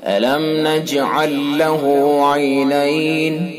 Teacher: میم ساکن کے بعد نون تو اظہار میم ساکن ہوگا